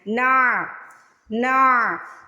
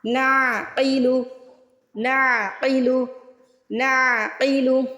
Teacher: بہت سے لوگ یہاں پہ جھٹکا لگا دیتے ہیں، نا کر کے پڑھ لیتے ہیں، ایسا نہیں ہے، نا نہیں پڑھنا، عین کی آواز نکالنی ہے